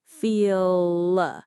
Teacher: The vowel in feel sounds deeper, longer. Feel. My tongue tip might come up a little at the very end, but the main work is happening at the back. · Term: dark L